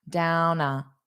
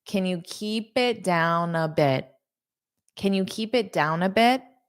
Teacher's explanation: So, notice that N and A connect down a